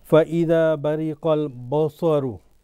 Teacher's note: Sad is tafkhim, full mouth. Ba isn't.